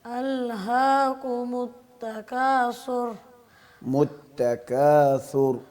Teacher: را ساکین ماقبل زبر ہو یا ماقبل پیش ہو، وقف کی حالت میں بھی را کو پر پڑھتے ہیں